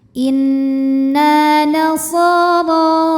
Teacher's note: Maka huruf ra ini kita panjangkan 2 harokat. Maaf, kita bunyikan tebal ya, tafkhim. Pangkal lidah kita naikkan.